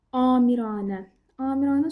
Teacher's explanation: Amirə sözündə baxın belə olur. Yəni həm A uzanır birinci hecadakı A, həm də ki, üçüncü hecadakı A uzanır. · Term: uzanma